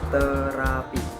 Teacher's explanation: ujung lidah bersentuhan dengan gigi atas